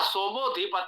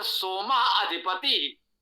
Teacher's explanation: ओ के पश्चात आप बोल नहीं सकते क्योंकि दो स्वर का एक साथ उच्चारण करते नहीं तो आ लुप्त हो गया